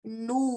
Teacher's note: کئی لوگ ایسے پڑھتے ہیں نو، نو ناک سے آتی ہے پوری آواز. صرف نون ضمہ کی آواز ناک سے آئے گی اور واو مد کی آواز صرف ہونٹ سے آئے گی · نو واو مد پہ خیال رہے کہ آپ ناک سے نہ نکالیں